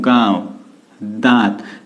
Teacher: वायु मुंह प्लस नाक यानी मुख और नाक दोनों से निकल रही है, तो इसे हम क्या बोलेंगे, अनुनासिक स्वर बोलेंगे।